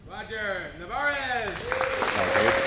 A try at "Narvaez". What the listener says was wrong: Where's the other R?